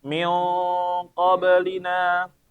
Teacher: huruf qaf termasuk huruf tebal, maka dia dengungnya tebal